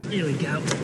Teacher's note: he dropped an H